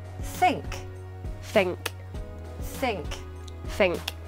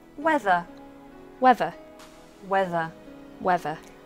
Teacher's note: the th sound this is often replaced with an F or a V